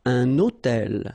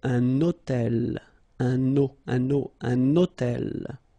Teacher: I'm making this little liaison, this little link between the two.